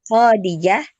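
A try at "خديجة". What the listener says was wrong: Bukannya kho yang panjang, jangan. Khadijah.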